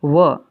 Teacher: अंतस्थ व्यंजन कहते हैं इसे। इस व को दंत और ओष्ठ दोनों के माध्यम से बोला जाता है। इसे दंतोष्ठ्य भी कहते हैं।